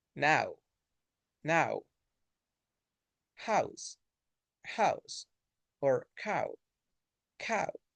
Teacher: this is going to start with a and it moves to uh ooh